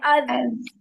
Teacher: दाल है, अज, जबान आगे वाले दांतों के किनारों से लग रही है नीचे से, और आवाज में तसादुम हो रहा है